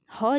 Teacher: ह जो है, इसका उच्चारण होता है कंठ के अंदर से